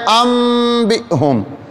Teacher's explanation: نون ساکن کے بعد با آیا لیکن اس نون کو میم سے بدل دیا، اس کو پڑھتے ہیں ام بہم، ام با یم بیو، یہ الفاظ ہیں، اس کو کہتے ہیں اقلاب۔